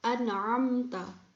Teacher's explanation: mim mati bertemu dengan huruf ta. Jadi huruf mim di sini harus dibaca dengan jelas. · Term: izhar syafawi